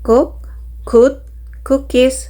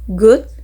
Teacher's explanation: K is voiceless and G is voice. Both consonants are velar plosive, meaning they are made with raising the back of the tongue towards the soft palate, but G uses the vocal cords.